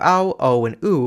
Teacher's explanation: Something interesting happens in Vietnamese, where vowels o /ɔ/ ô /o/ and u /u/ break into /aw/ /əw/ and /ʊw/ before coda /k/ and /ŋ/ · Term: vowel breaking